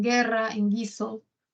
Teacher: esa U es parte del dígrafo gu, y representa la oclusiva velar sonora